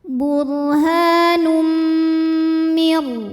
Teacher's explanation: Lalu berikutnya ada hukum idgham bi gunnah karena ada tanwin dhammah yang menghadapi huruf mim. Maka tanwin dimasukkan ke mim. Burhanum, jadi bunyinya M ya. Dan kita dengungkan, tahan.